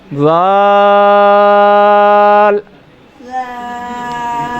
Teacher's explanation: زال کا مخرج زبان کا سرا اور اوپر کے دانتوں کے اندرونی کنارے سے ادا ہوتا ہے